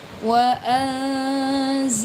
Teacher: lam jalalahnya dibaca tebal karena jatuh setelah fathah